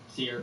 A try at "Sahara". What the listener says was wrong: Sahara. Sierra. Sound like you're saying Sierra.